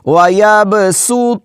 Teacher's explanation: सीन को बारीक त को मोटा